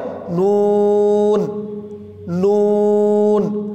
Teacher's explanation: জিহ্বার আগা তার বরাবর উপরের তালুর সঙ্গে লাগিয়ে উচ্চারিত হয়